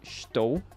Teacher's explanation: sometimes the letter S will have this more fricative sound, more like sh. And then obviously estou will sound a little bit more like estou.